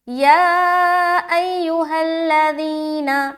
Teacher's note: یا کے اوپر مد آ گیا، اب کھینچیں گے 3 سے 4 الف. یا ایھا الذین آمنوا، آمنوا آمنوا، آ کو کھینچ رہے، منو نو میں کھینچ رہے، میم کو جلدی پڑھیں گے.